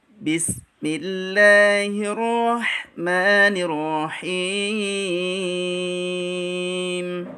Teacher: Karena huruf sin memiliki sifat ar-rakhawah. Juga huruf sin memiliki sifat as-safir, yaitu keluarnya suara desis · Huruf sin memiliki sifat ar-rakhawah, yaitu bunyi dialirkan. Jadi jangan baca bismillah gitu, tapi dialirkan.